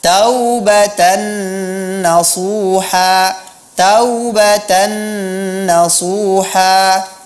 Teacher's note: seharusnya dibaca dengan mad layyin